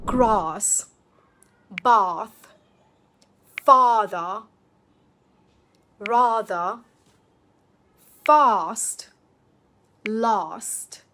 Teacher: This is actually one of the clearest regional markers in British English. Some parts of Britain use a flatter A instead, but RP, the standard accent, uses this longer open version.